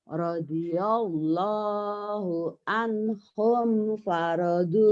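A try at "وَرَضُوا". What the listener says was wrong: Bukan fa. Waradu bukan paradu.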